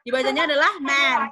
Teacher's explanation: Dibacanya adalah man karena dia vowelnya adalah vowel AE